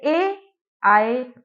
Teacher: ए और आय ये दो हमारे ऐसे वर्ण है जिनका उच्चारण स्थान कंठ और तालू से होता है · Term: कंठ तालु